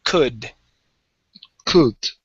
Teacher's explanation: So the L is silent. Pronounce the D.